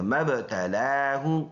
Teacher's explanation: کڑی زبر ایک الف کے اندازے سے لمبا کریں گے، مبتلا، ہا پیش ہو، سینے سے ادا کریں گے